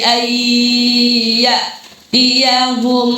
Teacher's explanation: Cara bacanya memasukkan suara nun ke huruf di depan beserta dengan ini huruf ya, berarti bukan lagi an ya tapi ai, masukkan ke ya tapi ditahan dengan dengo. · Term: idgham bi gunnah